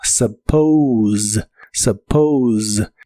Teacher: La u se pronuncia como una a suave y la o se pronuncia como o u. La s suena vibrante como si fuera la Z de inglés y suena como suppose suppose.